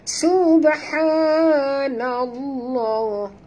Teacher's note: dekat ba ada tanda mati ataupun sukun, maka lantunkan dia qalqalah